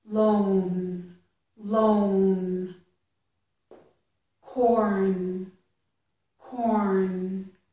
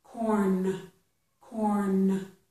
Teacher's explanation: I'm putting my tongue up there for the n, but I'm not really releasing. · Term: not releasing